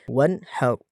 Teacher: ہا اپنی مخرج سے ادا ہو، گلے کے درمیان والے حصے سے